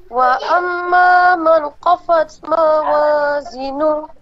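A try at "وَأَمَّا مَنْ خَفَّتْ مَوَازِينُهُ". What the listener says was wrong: Yang khafat itu yang salah. Wa amma man khafat. Nah, berhenti seketika. Khaf, dia berhenti dulu. Khaffat.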